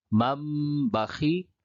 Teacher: تنوین یا نون ساکن کے بعد با آئے تو نون کو میم سے بدل کر غنہ اور اخفا کے ساتھ پڑھیں گے، اس کو اقلاب کہتے ہیں۔